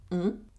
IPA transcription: ɔ̃